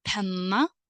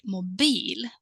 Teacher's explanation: we have a short vowel, as in penna, because we accentuate the consonant double N, while we have the word mobil, where we have a long vowel E, mobil, because E stands in front of one consonant only.